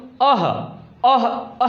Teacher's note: अह जो होता है आवाज कहाँ से, कंठ से